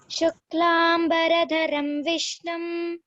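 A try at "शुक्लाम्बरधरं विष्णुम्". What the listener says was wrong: See there, the Mahaprana you have to stress. Okay, Shuklam Baradharam Vishnum.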